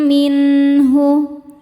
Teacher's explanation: Min ada izhar halqi karena nun sukun bertemu huruf halqi yaitu ha. Cara bacanya nun dibaca jelas.